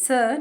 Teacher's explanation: मैंने स बोला क्योंकि जब हम स बोल रहे हैं तो उसमें स के साथ अ का उच्चारण आता है। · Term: हलंत